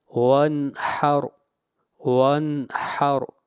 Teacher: نون کے اوپر غنہ نہیں کیا بلکہ اظہار کیا، اس لیے کہ نون ساکن کے بعد حروف حلقی میں سے ہا آ رہا ہے۔